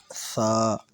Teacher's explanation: اچھا، جو سا ہے نا، یہ والی سا، اس کے اوپر 3 نقطے ہیں، دانتوں کے بیچ میں پڑھنا ہے۔ سا یعنی دونوں جو دانت اس کے بیچ میں زبان کا سیرا لے کے پھر پڑھنا ہے، سا۔